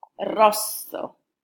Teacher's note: The R in Italian is rolled.